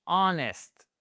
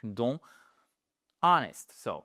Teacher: vous ne prononcez pas le H.